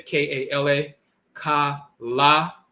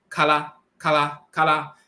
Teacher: the L is still the tongue tapping the roof of the mouth once